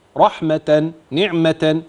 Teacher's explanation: التاء المربوطه تبدل عند الوقف هاء